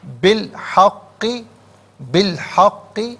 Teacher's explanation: درمیان میں سے الف یعنی حمزہ کو حذف کیا جائے گا۔